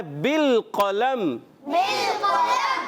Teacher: قاف کو موٹا رکھنا ہے، لام کو ہلانا نہیں